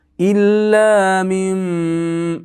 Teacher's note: yengil bo'lishi uchun nunimiz mimga almashib ketadi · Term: iqlab